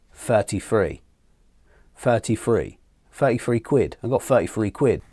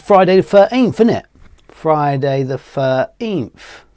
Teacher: the TH here we don't use if you use a Cockney accent. It's more like to be an F or a V. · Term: TH fronting